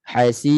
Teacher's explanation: bunyi ra itu nipis ada getaran yang minimum kemudian suara itu tidak terputus terus dia ada suara yang mengalir sedikit